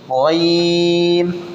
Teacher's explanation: ये भी हरूफ मुस्तालिया में से, इसको भी मोटी आवाज़ से पढ़ेंगे